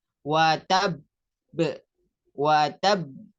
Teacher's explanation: Jadi di sukun kemudian ada hentakan terus ada tahan sedikit. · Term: qalqalah akbar